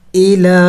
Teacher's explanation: फ़तूबू हमज़ा ज़ेर ई, लाम कड़ी ज़बर ला, इला। हमज़े के ऊपर हरकत है यानी ज़ेर है, और हरकत को इनको लंबा नहीं करना, इनको जल्दी पढ़ना होता है